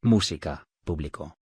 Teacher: Las palabras esdrújulas llevan tildes siempre y se acentúan en la antepenúltima sílaba